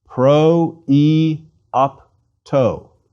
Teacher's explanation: it means that the iota is pronounced separately from the preceding omicron rather than as the diphthong oi